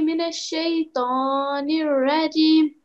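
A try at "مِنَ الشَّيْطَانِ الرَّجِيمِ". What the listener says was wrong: Yeah, so this one needs to be prolonged. Nirajim. This ya, this jim needs to be prolonged because of this ya. Nirajim. Yeah, A'udhu billahi minash shaitanir rajim. That was good, because I think when you were reciting it off by heart, it was too short.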